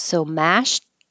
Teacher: really the ED will sound like a T, but you don't have to release the T. Your tongue just goes to the T position, so you won't hear that at all.